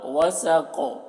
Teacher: قاف کو موٹا کر رہے اور یہاں پر بھی قلقلہ ہو رہا